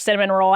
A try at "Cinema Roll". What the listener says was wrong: So sorry, it is Cinema Roll. There's no N. It's spelled like cinnamon roll. Take out the N. Cinema Roll.